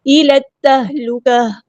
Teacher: لام کو ہم نے تا کے ساتھ ملا دینا، حمزۃ الوصل ہمارا ڈراپ ہو جائے گا